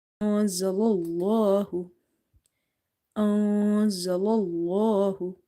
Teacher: Hamza, noon, fatha, za, fatha, za. So we have to hide this noon sakin because we have to do ikhfa here